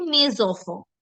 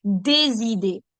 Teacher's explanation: like for a smoother transition, the sound becomes z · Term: liaison